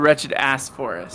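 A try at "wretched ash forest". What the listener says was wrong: No, wretched ash. There's an H there. I'm saying ash.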